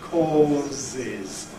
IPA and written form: ˈkɔːzɪz (causes)